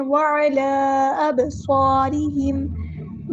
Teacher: با پہ کلکلا ہوگا، آواز جو ہے وہ پلٹ کر واپس آئے گی